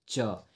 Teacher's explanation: आप लोग का जो जीवा है वो तालु ऊपर में सटता है, ठीक है, जो यहाँ पे है ना वहाँ सटता है, ठीक है। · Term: तालव्य व्यंजन